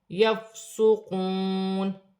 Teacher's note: واو ساکن سے پہلے پیش ہے واو مدہ بن رہی ہے، ایک الف کی مقدار کھینچ کر پڑھا جائے گا